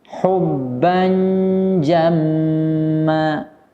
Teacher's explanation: Huruf tanwin bertemu dengan huruf jim harus ikhfa. Hubban jamma harus ditahan minimal 2 harokat sampai 3 harokat, tidak boleh terlalu berlebihan.